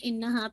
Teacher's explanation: make sure انہا پہ آپ کا غنہ ہے، اور غنہ جو ہے موسٹ کمپلیٹ ہے